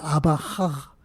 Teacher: Pues bien, por un proceso de fonética, hay una palabra, la palabra final de Amahaj, que es una GH, que es un sonido uvular, fricativo, estoy hablando un poco en plan técnico, sonoro, se transformó en uvular, fricativo, sordo.